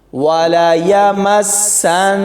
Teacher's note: میم کو سین کے ساتھ ملائیں گے تو سختی سے پڑھیں گے، لیکن جب سین کو نون کے ساتھ ملائیں گے تو یہاں پر غنہ ہوگا۔